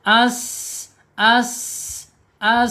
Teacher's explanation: Saofir itu ada suara desisan seperti suara angsa ya.